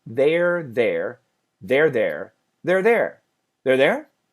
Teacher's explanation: that R sound can cancel the TH.